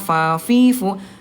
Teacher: huruf fa bibir dalam bagian bawah disentuhkan dengan ujung gigi seri atasnya, fa, fi, fu.